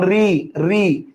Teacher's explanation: দেন হচ্ছে মূর্ধন্য বর্ণ, যেমন রি রি, ওই যে জিহ্বার দাঁতের উপরে পাটির দাঁতের পেছন ভাগ, যেটাকে মূর্ধা বলি আমরা, ওইখান থেকে উচ্চারিত হচ্ছে